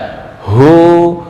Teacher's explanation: Hu itu makhrajnya di sini dekat dengan dada. Tenggorokan paling bawah dekat dengan dada.